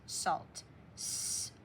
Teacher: AL can say aw too, but you still hear the L.